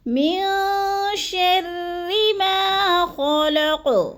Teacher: را مشدد کو باریک پڑھنا ہے، کیونکہ را کے نیچے زیر ہے تو را باریک پڑھی جائے گی، جیسے من شر ما خلق، خلق، خا کو پر کرنا ہے، من شر ما خلق۔